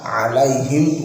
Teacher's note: Ain ya harus ain, nggak boleh dibaca hamzah.